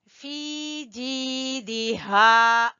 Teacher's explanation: फी को खींच रहे हैं याए मद्दा की वजह से, जीम को खींच रहे हैं याए मद्दा की वजह से, और दाल को छोटा पढ़ेंगे, फिर हा को खींचेंगे अलिफ मद्दा की वजह से।